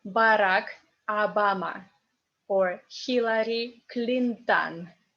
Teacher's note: O unstressed becomes A